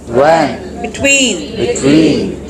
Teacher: last W is pronounce as W here your lips are to be rounded